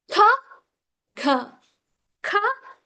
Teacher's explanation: So when you say k, the back of the tongue touches your soft palate. So soft palate, that is called velar sounds.